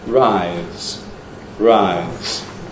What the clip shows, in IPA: raɪz̥